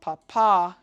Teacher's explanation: Pah-PAH has emphasis on the second syllable